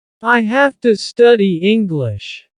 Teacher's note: Have to, here again, to changes to a.